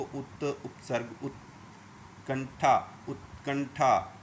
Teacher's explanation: तो अब बोलोगे आप कहोगे कि फिर इसको बोलेंगे कैसे, तो ऊ बोला, लेकिन त बोलने से हमें रुकना पड़ेगा। जहाँ पर त शब्द बोलते हुए जीभ लगती है, बस वहीं पर जीभ लगाते ही रुक जाना है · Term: आधा त